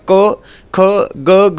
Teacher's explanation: क ख ग घ हे कंठ वर्ण असतात